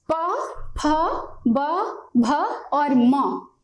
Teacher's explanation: प, फ, ब, भ, म, इनका उच्चारण स्थान हमारा ओष्ठ है, ये हमारे ओठ हैं